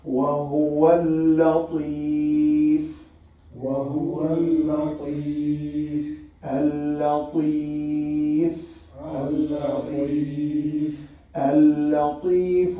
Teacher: no blown of the wind at all with the ta.